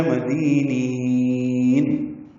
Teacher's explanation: نین میں نی کو لمبا کریں گے، وقف المد عارض بالسکون ہے.